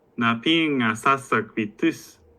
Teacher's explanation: And then with the copular suffix, then in the positive, the T reduces and becomes a glottal stop